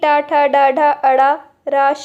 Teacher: मूर्ध से इनका उच्चारण किया जाता है, इसलिए इन्हें मूर्धन्य वर्ण कहते हैं